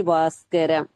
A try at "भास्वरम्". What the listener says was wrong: பாஸ்கரம் இருக்கா பாஸ்வரம் இருக்கா?